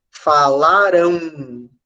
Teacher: de um U que não aparece como uma letra falarão Então a gente tem o a e como se houvesse depois do a o som de um ou · Então, a gente tem o A, e como se houvesse depois do A, o som de um U. Novamente, o som é nasalizado, serão ditongos nasais.